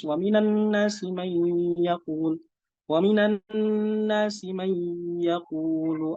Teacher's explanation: Misalkan wa minan nasi may yaqulu atau ya seperti itu, tidak disertakan gunnahnya gitu. Harusnya kan ada gunnah 2 harokat.